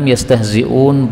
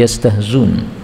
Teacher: yastahzi'un, boleh dihilangkan hamzahnya menjadi yastahzun